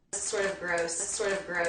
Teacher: I made a flap T out of the T in sort of. This is because it comes after an R before a vowel sound.